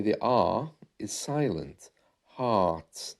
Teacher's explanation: you'll notice there by the way the r is silent heart and that's something which is prevalent in received pronunciation ah